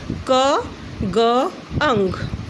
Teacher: articulated by the back of the tongue against the soft palate such as k, g, ang. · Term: Velar